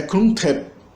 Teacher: o que a gente transcreve como NG, mas é uma consoante só, né? O é a velar nasal.